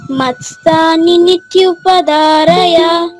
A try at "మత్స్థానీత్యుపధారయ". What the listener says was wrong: మత్స్థాని రెండు నీ లేవు నాన్న. మత్స్థానిత్యుపధారయ.